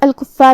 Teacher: آخری میں یہاں حرف الرا ہے. یہاں را کا حکم ہے تفخیم کیونکہ اس پہ پیش ہے تو ہم را کو بھاری آواز میں پڑھیں گے